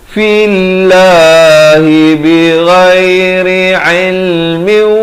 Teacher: masuk berserta dengung, dua harakat